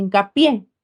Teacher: Si yo uno hinca más pie, pronuncio hincapié, recae en la última sílaba. Por esa razón se tildó por ser aguda terminada en vocal.